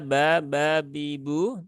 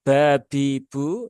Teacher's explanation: huruf ba dia tidak ada percikan udaranya tidak seperti orang Jawa ketika ketika berbicara